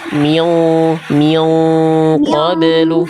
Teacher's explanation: Ikhfa-nya tebalkan. Angkat pangkal lidahnya karena ketemu qof.